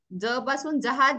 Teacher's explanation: पहिला जो ज आहे तो अल्पप्राण म्हणतात त्याला म्हणजे हळू म्हणायचं आहे ज सॉफ्टली